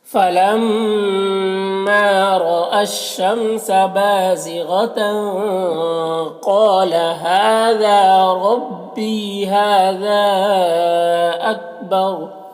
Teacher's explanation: یہاں پر وقف کریں گے تو را کا پیش سکون سے بدل جائے گا اور را کو پر پڑھیں گے